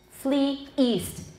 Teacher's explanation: the first has a glottal stop at the beginning of east